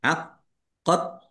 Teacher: Qofnya ada tasdidnya dibaca dobel